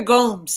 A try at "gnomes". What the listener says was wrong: Gnomes. They're called gnomes. The G is silent.